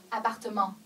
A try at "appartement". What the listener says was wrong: Non, T, ça se prononce pas. T, ça se prononce pas.